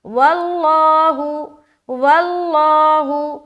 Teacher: लफ्ज़ अल्लाह का लाम मोटा क्योंकि यहाँ पर वाव के ऊपर ज़बर आ गया